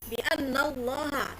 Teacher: karena ada tasdid ditahan dua harakat · nun adalah gunnah nun ya, karena ada tasdid, ditahan 2 harokat, ada yang 3 harokat boleh. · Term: gunah